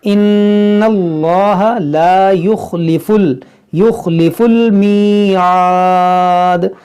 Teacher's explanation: یہاں پر دیکھیں اس میں جلال سے پہلے زبر ہے تو اس کو موٹا کریں گے، یہاں نون مشدد اس میں غنہ کریں گے